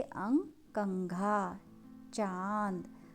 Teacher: ये अनुनासिक स्वर हैं। छोटा अंग और बड़ा अंग नाक और मुंह से बोले जाते हैं